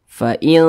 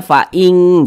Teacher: lebih condong berbunyi n tapi disamarkan. Fa'il, jangan dibaca fa'ing, jangan. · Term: ikhfa